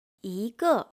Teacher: When E comes before a falling sound word, it sounds rising.